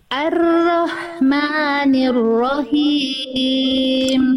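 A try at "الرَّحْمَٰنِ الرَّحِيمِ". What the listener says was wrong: him him him kurang berbisik sekali lagi jadi dilafalkan dari tengah tenggorokan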